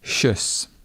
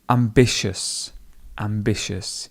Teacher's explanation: We've got the hard sh, and it goes shus. And if you notice there is a schwa in there, it's just uh.